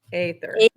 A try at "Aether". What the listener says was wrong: Not ether. Aether. Aether.